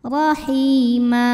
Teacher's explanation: bacanya tebal pangkal lidah dinaikkan Rahi Hi ma thobii dahohiri karena ada ya sukun yang sebelumnya berbaris kasrah maka huruf ha panjang dua harakat